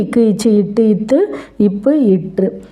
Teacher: ஒரு மாத்திரை அளவுல இருந்து அரை மாத்திரை அளவா குறைஞ்சு ஒலிக்கிறதை தான் குற்றியல் உகரம்னு சொல்லுவோம்